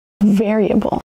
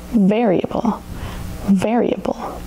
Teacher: Variable has four syllables. Emphasis on the first syllable.